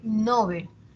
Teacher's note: Está muy extendida la pronunciación llana a pesar de de que se recomienda novel se extiende su